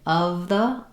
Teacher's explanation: I have to sneak my tongue forward quickly for the TH sound. Also notice in my the that I'm using a schwa there as well.